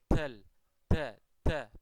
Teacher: ketika ada orang mengucapkan dal, ternyata kok ada udara yang mengalir